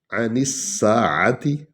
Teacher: نون کو سین میں ملانا ہے سین پر شد ہے